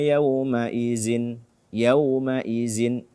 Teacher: ujung lidah bersentuhan dengan ujung gigi seri atas